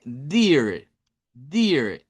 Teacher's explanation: esa doble e suena como i, como i del español, larga